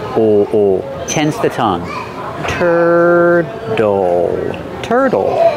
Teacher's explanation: And we have a dark L at the end. O, O. Tense the tongue.